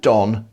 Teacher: In vast swathes of the continent, there's no longer a distinction between Dawn, the woman's name, and Don, the man's name.